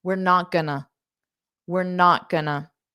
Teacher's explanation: going to becomes GNA in spoken English or informal English